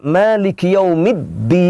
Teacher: Maliki Yaumiddin, ditahan ya. Middin itu dal bertasjid. Jadi bacaannya jangan seolah-olah dalnya itu tidak ada tasjidnya.